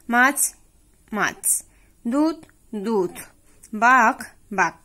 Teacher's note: শব্দের আদিতে শ্বাসাঘাতের ফলে শব্দের শেষে অবস্থিত মহাপ্রাণধ্বনি অল্প প্রাণধ্বনিতে পরিণত হয়